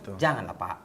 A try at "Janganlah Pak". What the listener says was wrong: Nah, itu panjang tuh tadi dia.